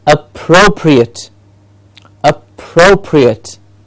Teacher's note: and the pro gets the stress